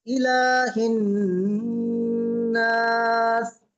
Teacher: লামে এক আলিফ পরিমাণ টান আছে